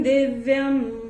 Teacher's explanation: और य के ऊपर अनुस्वार चरण की समाप्ति पे आ रहा है, अनुस्वार चरण की समाप्ति पे आएगा तो उसका उच्चारण केवल और केवल म ही होगा